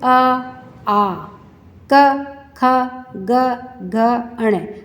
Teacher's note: हमारे कंठ में से इनकी आवाज़ आती है, तो ये कंठया वर्णा कहलाते हैं।